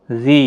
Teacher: یا مدہ ہے، 1 الف کی مقدار کے برابر کھینچیں گے۔